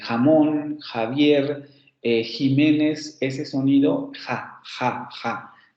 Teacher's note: El fonema velar fricativo sordo, que es el de Juan.